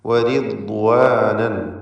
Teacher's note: വരിദ്വാനൻ, ഈ പദത്തിൽ റാഇന് കസ്റായതുകൊണ്ട് തർക്കീഖ് ചെയ്യണം